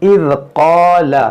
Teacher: یہ قاف کو موٹا پڑھیں گے اور اس کے ساتھ جو الف ہے یہ الف مدہ ہے, اس کو کھینچیں گے بھی. لام متحرک ہے, اس کو نہیں کھینچیں گے.